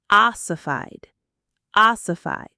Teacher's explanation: The stress is right at the beginning.